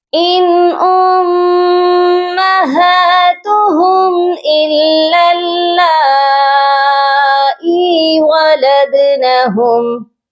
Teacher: یہاں ہم نے ولدنہم لام کو باریک پڑھنا ہے. دونوں ہی لام ہم باریک پڑھیں گے.